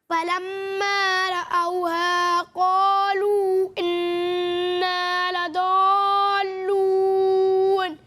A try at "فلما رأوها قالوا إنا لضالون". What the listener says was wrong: دیکھیں آپ نے مد کی مقدار اور الف مدہ حروف مدہ کی مقدار کو برابر ہی پڑھا ہے تقریباً، ٹھیک ہے نا، فرق نظر نہیں آیا، بلکہ آپ نے شاید حروف مدہ کو زیادہ کھینچا ہے، بلکہ حروف مدہ کو 1 الف کے برابر کھینچنا ہے، مد منفصل کو 2 یا 2.5 الف کے برابر کھینچنا ہے، اور مد لازم